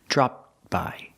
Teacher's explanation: But remember, we don't say dropped by. You don't really hear the T. It's a stop T.